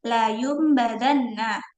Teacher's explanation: iqlab maka mengubah suara ba menjadi suara mim